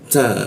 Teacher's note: ta bocor halus dia, ta ujung lidah bertemu gigi